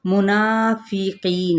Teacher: نا پہ الف مدہ کا قائم مقام ہے، اس کو ایک الف کے برابر کھینچیں گے۔ قی پہ یائے مدہ ہے اور قاف پر بھی ہے، اسی طرح نون کی حرکت کو البتہ ہم نہیں کھینچیں گے۔